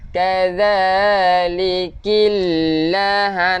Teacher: hujung lidah keluarkan sikit untuk zal